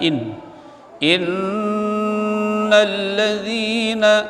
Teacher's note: nun tasydid tajibul gunnah, dibaca dengung, ditahan bacaan